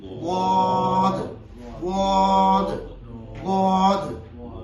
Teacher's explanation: ضاد جو ہے یہ زبان کے جو پچھلے کونے ہیں، یعنی زبان کے بغل بھی کہہ سکتے ہیں، اور عربی میں اس کو قرۂ عظام کی اصطلاح میں اس کو کہتے ہیں حافۂ لسان، یعنی زبان کے جو پچھلے پہلے کونے ہیں، وہ کہتے ہیں کہ زبان کا بغلی کنارہ اوپر والی دانتوں کے چاہے دائیں طرف لگائیں چاہے بائیں طرف سے لگائیں، چاہے بیک وقت دونوں ہاتھوں کو اوپر والی دانتوں کے کنارے پر لگائیں تو ضاد ادا ہوتا ہے۔ · حافۂ لسان یعنی زبان کے کنارے جو پہلے کنارے ہیں گلے کی طرف، وہ اٹھا کے جب آپ دانتوں کے کناروں میں اندر لگاتے ہیں تو ضاد ادا ہوتا ہے